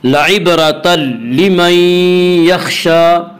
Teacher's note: یا را کے اوپر زبر ہے اس سے را کو پر پڑھیں گے. لعبرۃ لمن, لعبرۃ لمن میں ادغام بلا غنہ ہوگا, اس ادغام تام بھی کہتے ہیں. · لعبرۃ را کو پر پڑھا جائے گا. اس کا قاعدہ یہ ہے کہ را کے اوپر زبر اور پیش آئے تو را کو پر پڑھا جائے گا, را کے نیچے زیر آئے تو را کو باریک پڑھا جائے گا.